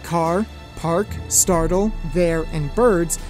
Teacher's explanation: my American accent is rhotic, so in words like car, park, startle, there, and birds, I'd naturally pronounce the R sound.